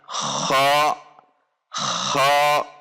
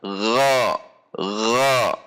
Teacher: Antara huruf ghain dan huruf kha, yang membedakan adalah hanya sifat jahar dan sifat hamas atau al-mahmus. Saat huruf kha adalah dengan cara mendorong udara, kha, kha, sementara huruf ghain dengan tidak mendorong udara, gha, gha, tidak gha, gha.